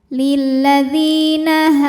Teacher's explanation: karena ada Alif didahului harakat fathah maka ha panjang dua harakat